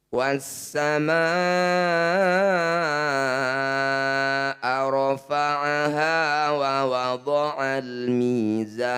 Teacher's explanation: bunyi lam sukun ini baca jelas dibaca terang artinya bunyi lam sukun selesai di sini tidak boleh ikut di huruf berikutnya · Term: izhar qamariah